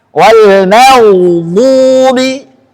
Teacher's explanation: Ghain sifatnya rakhawah, mengalir suara. Wal maghdubi, ghain isti'la, rakhawa, sukun.